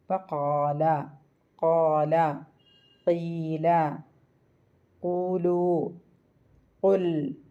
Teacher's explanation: നാവിന്റെ പിൻഭാഗം അണ്ണാക്കിന്റെ മൃദുലമായ ഭാഗത്തോട് ചേർക്കുക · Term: കാഫ്